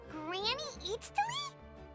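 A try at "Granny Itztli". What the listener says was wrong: But emphasis on Eatstly, not Granny.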